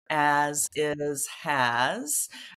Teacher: they have that s on the end but the S doesn't make the S sound but the z sound